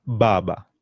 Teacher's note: It's a soft sound in English, but in Kiswahili, the B, D, G, J, they have a bit of emphasis on them.